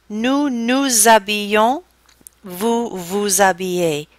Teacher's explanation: the nous and the vous are going to be treated with a liaison that is going to blend in better with the word that comes after it